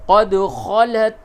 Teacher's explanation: قد دال میں قلقلہ کیجئے